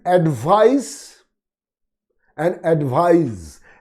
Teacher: S follows I, that means follows a vowel sound. S will be pronounced as Z, Z, voiced one.